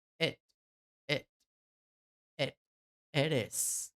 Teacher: É um som de E. É um E bem curtinho